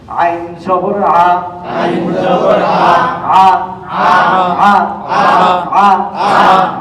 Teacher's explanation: আইন কণ্ঠনালীর মাঝখান থেকে হবে, আওয়াজটা চেপে যাবে। আর এইটা একদম শুরুতে হবে আ হবে, আর এটা হবে আ।